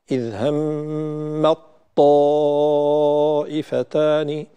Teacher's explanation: إذ همت طائفتان فتصبح إذ همت طا همت طا، لا نقول إذ همت طا نبدأ بتاء وننتهي بطاء، وإنما ننتقل إلى طاء مشددة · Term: إدغام التاء في الطاء